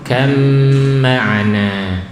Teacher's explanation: Kam itu idghamnya di situ. Kam ma'ana langsung masuk mim gunnah.